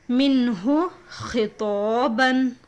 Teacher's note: نون ساکن کے بعد حروف حلقی کے 6 لیٹرز میں سے ہا ہے. ادھر دیکھیے ہا ہے، اس لیے اس نون کو ظاہر کر کے پڑھنا چاہیے. اس کو اظہار کہتے ہیں.